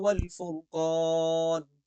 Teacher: قاف میں قلقلہ ہوگا اور قاف موٹی بھی پڑی جائے گی